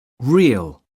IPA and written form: rɪəl (real)